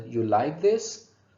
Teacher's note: they use declarative sentence with rising intonation to make a question